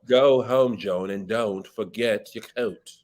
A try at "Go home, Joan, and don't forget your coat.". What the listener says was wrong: Not bad.